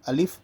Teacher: بہت سارے بچے یا پھر بڑے لوگ بھی الیف پڑھتے ہیں، اس کو الیف نہیں کھینچنا۔ الف صرف الف، لام، فا، 3 ہی لفظ ہیں یہاں پر۔